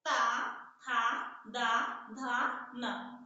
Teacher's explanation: हमारी जीवा तुरंत हमारे दंत के पास आ जा रही है, हमारे दांतों को स्पर्श कर रही है, इसलिए ता वर्ग का उच्चारण स्थान जो है दंत है।